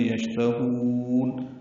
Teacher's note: شین ساکن ہے، اس پہ ہمس ہے، تفشی ہے، تا کو جلدی پڑھیں گے، ہا کو لمبا کریں گے